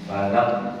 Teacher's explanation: Balak berhenti langsung. Itu namanya syiddah. Termasuk huruf yang tebal juga qaf ya.